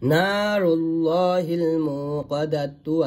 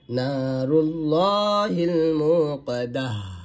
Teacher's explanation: যদি ওয়াকফের অবস্থায় গলতা আসে আর সেইখানে যদি ওয়াকফ করি তাহলে সেই তাটা কিন্তু হা সাকিনে পরিবর্তন হয়ে যাবে, অর্থাৎ যাকে ইবদাল বলা হয়, ইবদাল অর্থই পরিবর্তন করা।